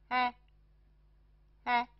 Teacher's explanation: 这个符号发音的时候，半开口，开口符，半开口，舌面保持自然状态，舌尖抵下齿 ，舌尖抵下齿，怎么发呢？哎，哎，这个元音符号发为哎。这个符号的发音与国际音标的啊和哎之间，介于啊和哎之间，哎比▁a▁稍大一点，比